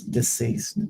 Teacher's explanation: I have to turn my vocal cords off to pronounce deceased